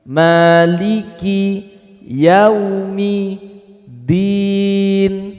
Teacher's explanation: i-nya betul-betul i. Bukan i yang tercampuri e, nggak boleh. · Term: kasroh